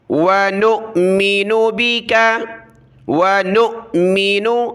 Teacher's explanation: حمزہ ساکنہ کو جھٹکے کے ساتھ پڑھنا ہوتا ہے، یہ واو نہیں ہے، حمزہ بشکل واو کہلاتا ہے، حمزہ ہے، اس کو ہم نے جھٹکے کے ساتھ پڑھنا ہے۔